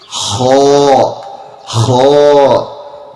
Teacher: The letter kha, it is coming, and the source of it is also from the throat. However, it is closer than ha and ha. Kha, it comes from the beginning of your throat.